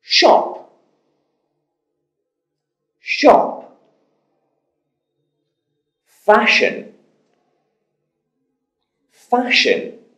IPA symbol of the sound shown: ʃ